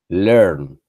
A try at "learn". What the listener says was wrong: Se tiene que escuchar la N. Listen. Learn. las consonantes finales de muchas palabras que en inglés no estamos acostumbrados nosotros a esa pronunciación de dos consonantes juntas.